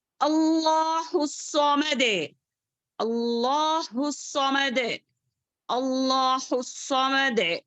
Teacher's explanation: اللہ الصمد، صاد کو موٹا، دال میں خلخلا ٹھیک سے ادا کریں گے